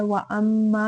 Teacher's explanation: व अम्मा में देखिए मीम मुशद्दद है, गुन्ना करेंगे, अलिफ मद्दा करेंगे, 2 हरकत लंबा करेंगे।